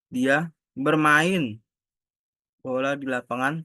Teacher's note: Tekanan pada kata bermain dan bola